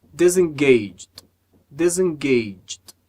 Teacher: o último E não é pronunciado. A gente junta o som do G com o som do D.